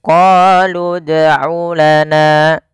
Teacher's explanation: harus kita pantulkan bunyi suara dalnya, karena huruf dal termasuk salah satu sifatnya adalah qalqalah, yaitu memantul.